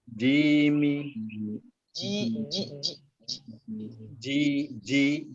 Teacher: Ji itu ada di tengah lidah dengan langit-langit.